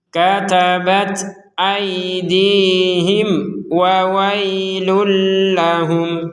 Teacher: Mim sukun bertemu waw kita baca dengan jelas.